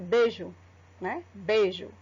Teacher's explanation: o E é uma vogal e o I, como o som é mais fraquinho, ele é chamado de semivogal